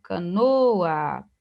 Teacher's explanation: Canoa, canoa não é acentuado, canoa, o no é a sílaba tônica mesmo, né? Um paroxítona terminado em A, por isso não é acentuado.